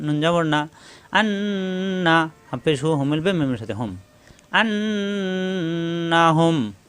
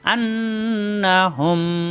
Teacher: মিম সাকিনের পরে মিম আসলে তাসদিদ ধরে গুনা করে মিলাতে হবে। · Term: মিম সাকিনের ঈদগম